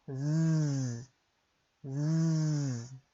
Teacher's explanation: a letra Z, ela fica na mesma posição da letra S na boca, mas a gente vai colocar o som da voz